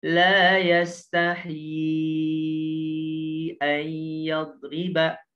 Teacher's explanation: mad jais munfasil yang panjangnya 4 harokat